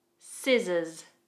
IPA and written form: sɪzəz (Scissors)